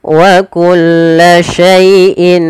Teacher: sempurnakan daripada bunyi Y bukan jangan E tapi I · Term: baca Lin